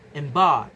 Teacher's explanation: Dark is a single stress syllable. Embark has two syllables but the stress is on the second one